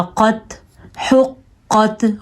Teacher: حروف مستعلیہ میں سے قاف ہے, ہم نے اس کو پر پڑھا